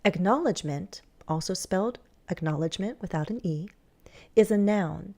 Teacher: you're going to hear me pause it's a parenthetical remark it's secondary information so my voice sets it off